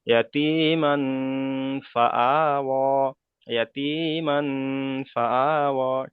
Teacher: খাড়া যাওয়ার আলিফ মাদ্দা সমতুল্য, তাই খাড়া যাওয়ারকে একালিপ পরিমাণ টান দিয়ে পড়তে হবে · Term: খাড়া যাবার